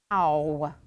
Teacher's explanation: they start kind of open and they move rounded position ow but my tongue it's interesting because my tongue starts off